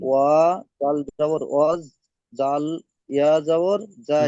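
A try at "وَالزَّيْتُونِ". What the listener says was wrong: যা, ওটা জাল নয়, যা যা। ওয়াও, ওয়াও যা যাবার ওয়াজ, যা ইয়া যাবার যাই, ওয়াজ যাই।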